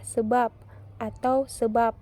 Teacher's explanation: dapat direalisasikan sebagai bunyi B atau P apabila berposisi sebagai koda pada sebuah silabel